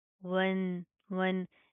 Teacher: ये अलिफ लाम स्किप होएंगे, ये वाव डायरेक्ट इस नून के साथ प्लस होएगा। नून के ऊपर शदा आ रही है, गुन्ना करेंगे, नाक के अंदर साउंड पैदा करेंगे